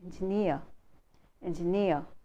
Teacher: the stress is on second syllable, engineer, engineer.